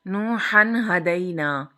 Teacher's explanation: تنوین کے نون کو بغیر گننے کے ظاہر کر کے ادا کریں گے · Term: اظہار حلقی